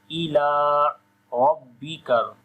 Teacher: Ra we read in heavy sound due to fatha sign on it.